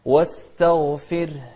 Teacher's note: شوف الغين المفخمة، لكن التاء اللي قبلها ما لها شغل فيها، مرققة